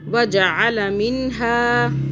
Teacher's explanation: عین کو حلق سے پڑھنا ہے